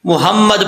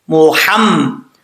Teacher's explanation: یہاں پر جو ہا ہے یہ ہا باریک ہے، بھاری ساؤنڈ والی نہیں ہے